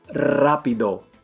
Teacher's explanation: if a word starts with r you Trill it